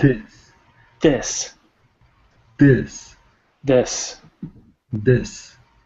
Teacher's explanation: Remember how we do the TH sound, teeth together? Our tongue comes in between, blocks the air, then we relax our tongue.